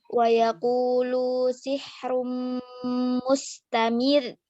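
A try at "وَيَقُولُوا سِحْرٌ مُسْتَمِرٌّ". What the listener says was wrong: Ya, udah bagus tuh.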